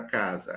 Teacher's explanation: Aí eu volto e explico assim, é com S. Mas esse S entre vogais tem som de Z.